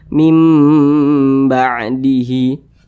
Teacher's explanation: didengungkan dua harakat atau kira-kira dua ketukan mim ba'dihi didengungkan itu suaranya itu kita tahan atau kita panjangkan